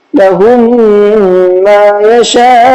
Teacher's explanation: یا حروف مدہ کا قاعدہ ہے، یا ساکن سے پہلے زیر ہے، اور یہاں دوسرا قاعدہ ہے میم ساکن کے بعد میم آ گیا تو میم کو میم سے ملا کر کے غنہ کر کے پڑھیں گے